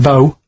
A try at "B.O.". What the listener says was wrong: It's B-O, and that's B-O-W. It's not pronounced bow, and it's not spout bow.